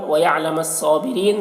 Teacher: صاد کو پر پڑھنا ہے، کھڑا زبر ہے، ایک الف کے برابر کھینچ کر پڑھیں گے، اور را کو باریک پڑھیں گے، اور یہاں پر وقفی کی صورت میں مد عارض وقفی ہو رہا ہے۔